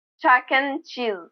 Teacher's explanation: Notice the pronunciation of and. In this phrase, I drop the D sound and I say N.